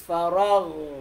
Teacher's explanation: yung ghain ay rekhoy. Tumutuloy yung boses. Farag. Hindi siya shadid.